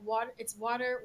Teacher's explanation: It's like your tongue hits the alveolar ridge really, really fast. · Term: a flap or a tap